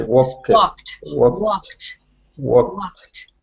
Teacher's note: don't pronounce the L in walked